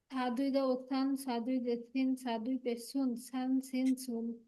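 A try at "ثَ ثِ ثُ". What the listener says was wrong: এই যে আপু নরম হয়নি সা উচ্চারণ। সা দুই জবর সান, সা দুই জের সিন, সা দুই পেশ সুন, সান সিন সুন, সান সিন সুন নরম হবে আপু। হ্যাঁ, নরম করার জন্য জিহ্বাটা একটু বের করে দিবেন, উপরে দাঁতের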